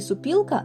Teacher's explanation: в слові супілка ненаголошений звук о уподібнюється до звука у під впливом наступного наголошеного звука і · ненаголошений звук о уподібнюється до звука у якщо він перебуває в позиції перед наголошеними звуками у чи І